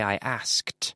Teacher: so you have the K and into the T the T sound it's a D but it sounds like a T